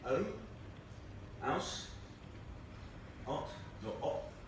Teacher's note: in most English dialects in England, the H is dropped. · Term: H dropping